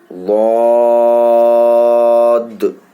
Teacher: زبان کی کروٹ اور اوپر کی داڑھوں کی جڑوں میں لگتا ہے